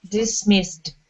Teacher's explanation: all of those S's are unvoiced S's